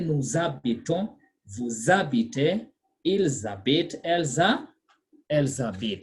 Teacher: You slur the S and A because the H is silent.